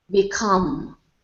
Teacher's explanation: the stresses on the second syllable